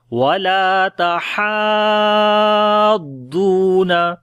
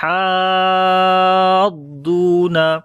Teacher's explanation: ضاد کے اوپر نبر کرتے ہیں، یعنی ضاد کی آواز تھوڑی سی بلند کرتے ہیں تاکہ پتہ چل جائے کہ یہاں پر جزم نہیں ہے بلکہ شد ہے